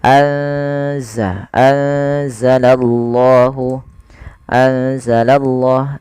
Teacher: Kemudian pada lafal anzala ada nun sukun ditandai dengan warna nun yang berwarna hijau dan tidak berharakat ini bertemu dengan huruf salah satu huruf ikhfa yaitu huruf zai. Maka cara membacanya yaitu memasukkan nunnya atau menyamarkan nunnya kepada huruf zai ya. Anza langsung kepada makhraj daripada huruf z anza, anzalallahu.